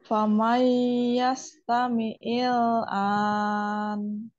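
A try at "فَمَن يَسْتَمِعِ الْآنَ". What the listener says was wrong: Didengung lagi, digunnah lagi. Famai, famai gitu ya. Famai yastami'il an.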